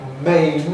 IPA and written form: meɪn (mane)